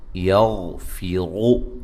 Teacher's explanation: یہاں غین اور را کو موٹا ادا کریں گے لیکن ہلانا نہیں ہے غین کو